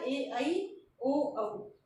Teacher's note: ए, ऐ आएगा कंठ और तालव्य में, और ओ, औ आएगा कंठोष्ठ्य में। कंठ और ओष्ठ्य से बोले जाते हैं ये।